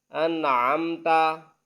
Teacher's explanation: ان پر غنہ نہیں کریں گے کیونکہ اس کے بعد حروف حلقی یعنی عین ہے